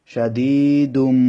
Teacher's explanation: ইকলাব, অর্থাৎ তানউইনটা মিম দিয়ে পরিবর্তিত হয়ে গেছে